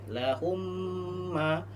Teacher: Ketika ada huruf mim sukun bertemu dengan huruf mim mim hidup ya. Maka hukumnya membacanya apa? Dibaca dengung. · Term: Idgham mimi